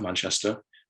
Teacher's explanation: people pronounce the kind of schwa vowel at the end of uh words like manchester more like oh